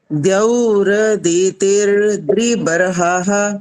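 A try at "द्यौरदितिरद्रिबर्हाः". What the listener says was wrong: ना तीर, फिर वो र और लंबा हो गया, और द्री वाला वो भी गलत हो गया।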